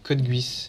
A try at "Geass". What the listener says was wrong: Ah non, non, Code Geass, en gros, le U, je le prononce pas. En gros, il a mis ça pour dire que c'est G.